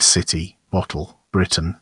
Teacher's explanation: the glottal stop has superseded the T sound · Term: glottal replacement